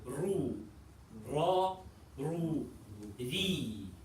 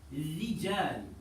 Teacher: So the kasra is very light, making the ra light, and the opposite when fatha and dhamma appears. Yeah, so when the ra is fatha and dhamma, then it stays heavy, or it's heavy. And then when it has the kasra, it's pronounced light.